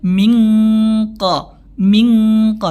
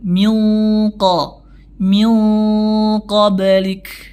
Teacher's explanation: ikhfanya harus dibaca dengan tafkhim nah ikhfanya dibaca dengan tebal